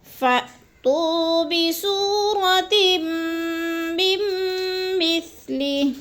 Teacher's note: مثلہ وقف کی صورت میں ہا کو ساکن کر کے پڑھیں گے